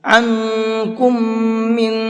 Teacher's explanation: عن کے نون میں اخفا ہے، اور کم کے میم میں غنہ ہے، اور من کے نون میں پھر اخفا ہے